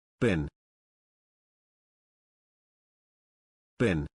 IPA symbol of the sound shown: bɪn